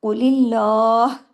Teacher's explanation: اللہ، آپ نے ہاں کی آواز اپنے گلے میں دکھانی ہے، اس میں لام ہیوی نہیں ہوگا، کیوں؟ اللہ کے نام سے پہلے زیر ہے